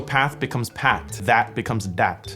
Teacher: they tend to pronounce their THs as Ts or Ds.